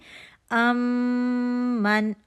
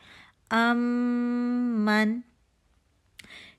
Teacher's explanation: اب ہم مشدد والا میم پڑھ رہے ہیں، من، اور ہم نے یہاں پہ 2 کاؤنٹ کا غنہ کرنا ہے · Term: ادغام شفوی